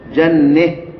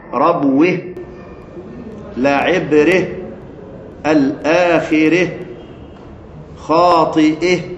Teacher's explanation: ايه هاء التانيث وهذا يسمى اماله لاجل الايه الاماله لاجل الاماله يعني تمال هاء التانيث وما قبلها